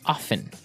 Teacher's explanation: Now, with pronunciation, some people like to pronounce often, right? They kind of leave out the strong T sound, while other people say often.